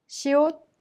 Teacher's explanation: a sound of air air escaping made by touching your tongue to the gums of the upper teeth sounds like between s in sound and Sh in she